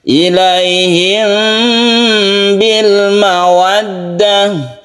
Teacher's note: Ini yang sempurna untuk yang ikhfa syafawi ini ya. Tidak terlalu mingkem ya, karena dia itu ikhfa. Ikhfa itu samar. Tidak terlalu mingkem membacanya ini, khusus ikhfa syafawi ini. · Dan ini cara membacanya sama ya, antara ikhfa itu didengungkan, artinya dipanjangkan ya.